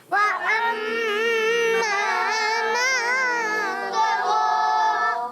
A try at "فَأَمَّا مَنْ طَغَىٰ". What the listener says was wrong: جی ہاں، فا کی ادائیگی کلیئر رکھنی ہے. فأما من طغى.